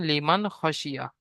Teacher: নুন সাকিন আওয়াজকে বিনা গুন্নায় জাহির করে পড়তে হবে · নুন সাকিনের পরে হুরুফে হালকি 6টি অক্ষরের মধ্য থেকে খ এসেছে, তাই নুন সাকিনের আওয়াজকে বিনা গুণায় জাহির করে পড়তে হবে।